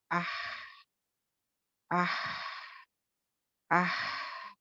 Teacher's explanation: सांस जारी हुई, आवाज़ थोड़ी पस्त हो गई। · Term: हम्ज़